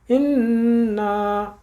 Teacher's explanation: نون کے اوپر تشدید آ گئی تو ہم غنہ کریں گے۔ حمزہ زیر نون ان، نون زبر الف نا، اننا۔